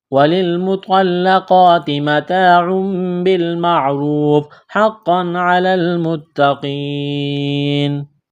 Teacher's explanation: لام کو لام کے ساتھ ملانا ہے، تا میں سختی کریں گے، دبائیں گے تشدید ہے، تا کے اوپر قاف کو موٹا کرنا ہے۔ یا ساکن سے پہلے زیر ہے، حروف مدہ یا ہے، الف کے برابر کھینچنا ہے، یہاں پر وقف کریں گے تو نون کو ساکن کریں گے۔